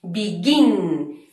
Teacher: tiene un golpe fuerte en la última sílaba